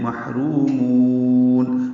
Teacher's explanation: محرومون، را کو 2 حرکات لمبا کریں گے اور میم کو اور لمبا کریں گے۔ مد عارض سکون ہے، آپ اس کو 4 حرکات 6 حرکات لمبا کر سکتے ہیں